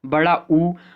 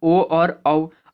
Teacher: जैसे पहले की हम बात करें वृत्ताकार की, तो वृत्ताकार या वृत्तमुखी मतलब क्या हुआ कि इसमें जब आप बोलोगे मुंह से तो मुंह का जो ओष्ठ की आकृति होगी वो गोल हो जाती है